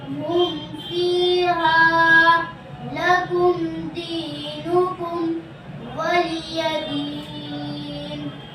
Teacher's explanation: میم ساکن کا اظہار ہوگا، یعنی جلد پڑھا جائے گا، نہ کھینچے گا، نہ غنہ ہوگا۔ جیسے ہم فیہا لکم دینکم ولی دین، اس کو اظہار شفوی کہتے ہیں۔